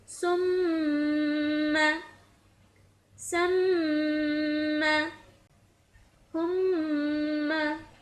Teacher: میں نے میم کی آواز کو جاری رکھتے ہوئے پڑھا ہے اور ناک سے اس کو غنہ کی صورت میں ادا کیا ہے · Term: میم مشدد